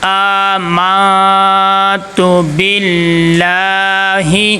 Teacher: یعنی نون کی آواز کو ہم ناک میں چھپا کے پڑھیں گے۔ آگے تا کے اوپر پیش ہے، اور پیش حرکات غیر مدہ میں سے ہے۔ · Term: اخفا